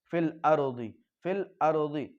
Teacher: را ساکن سے پہلے زبر یا پیش ہے تو را ساکن بھی پر پڑھی جائے گی